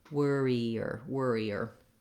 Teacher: because i'm gliding from the e to the er sound there's a little bit of a yup sound in there · and we have the challenge of doing those multiple r's so worrier is just like worry in that it has the were syllable and that's stressed